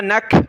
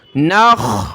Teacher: خا کو گلے سے نکالا، اس کی جگہ کھا نہیں پڑھنا